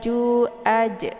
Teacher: makhorijul huruf ja itu tepatnya di tengah lidah ya agak ditekan sedikit jadi juaj ya kemudian a dibaca pendek a ini letak makarijul